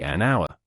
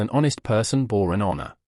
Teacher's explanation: the H in hour is silent, and the word starts with the vowel sound